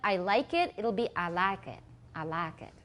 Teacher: 它是从双母音变单母音，它就是把后面去掉